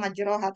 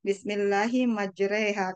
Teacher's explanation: harusnya kan ditulisannya kan majroha, tapi kita bacanya Bismillahi majreha karena dia imalah sugro ya